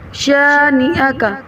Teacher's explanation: حمزہ کی زبر کو جھٹکا دیے بغیر جلدی سے پڑھنا ہے